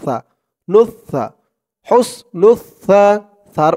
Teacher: উচ্চারণটা একদম নরম পাতলা করতে হবে জিহ্বার মাথা ওপরের দাঁতের মাথার সাথে লাগবে